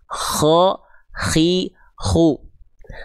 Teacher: huruf K mengalir suara plus dengan mengalir nafas.